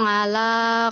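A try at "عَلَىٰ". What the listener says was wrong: bukan ngala ya, ala ya, orang Jawa kan alanya ngala, ala ala ya, bukan ngala, ngala apa mau ngala ya, ala ya,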